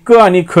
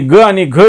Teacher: कठोर व्यंजने क आणि ख येतं मृदू व्यंजने ग आणि घ येतं